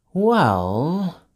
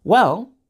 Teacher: when we use well to show that we are done talking, we use rising intonation like this